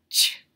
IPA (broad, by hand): tʃ